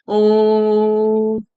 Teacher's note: ओ इसको प्लुत स्वर माना गया है। जिसमें समय तिगुना लगता है। जैसे ओ ऐसे बोला जाता है।